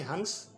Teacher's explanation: स्वर के बाद में जो नासिक की ध्वनि है वो निकलती है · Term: अनुस्वार